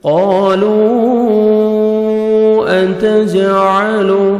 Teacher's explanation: جیم حروف قلقلہ میں سے ہے، جب ساکن آتے ہیں یہ 5 لیٹرز، قاف طا با جیم دال تو ڈبل ساؤنڈ آتا ہے، عین کو اپنے صحیح مخرج سے ادا کریں گے۔